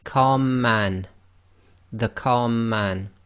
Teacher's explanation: first one here if we say calm man the calm man the two M's sort of merge together and you end up holding the two M's for a little bit longer and effectively not taking a pause between the two letters the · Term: gemination